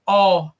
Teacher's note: O nó, ele recebe acento e a gente crava no nó. É o O aberto, ó.